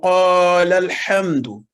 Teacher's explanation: لیکن جب دونوں کو ملا کے پڑھا جائے گا تو قال الحمد ہو جائے گا، جس میں دونوں الف جو ہیں وہ ساکن ہو جائیں گے، وہ نہیں پڑھے جائیں گے